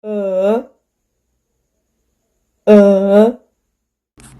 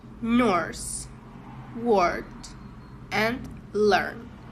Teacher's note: This sound /ɜ/ is a long central vowel. The tongue is in the middle of the mouth and the lips are unrounded.